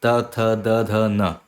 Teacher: हमारी जो जीभ है जो हमारी जिव्या है वो अब दांत के ही एकदम पीछे है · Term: त वर्ग